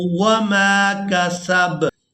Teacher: یہاں با کو ساکن کر دیں گے وقف کی وجہ سے